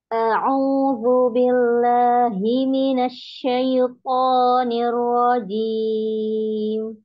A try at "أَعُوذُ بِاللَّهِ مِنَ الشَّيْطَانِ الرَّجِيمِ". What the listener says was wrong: Dorong lagi suaranya, Om. Ya, mau belajar untuk tidak ngayun.